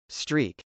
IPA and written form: strˈik (streak)